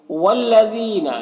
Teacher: لام مشدد ہے تو پیچھے والے متحرک حرف واو سے مل کر پڑھا جائے گا۔ یہاں پر یا مدہ ہے، ایک الف کے برابر کھینچیں گے۔